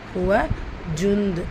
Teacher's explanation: ஹுவ ஜுந்த் நூன் சுக்குனுக்கு அப்புறமா லெட்டர் தால் இருக்குது. இஹ்ஃபா நூனை பாதியாக மறைச்சி குன்னா செஞ்சு ஓதணும்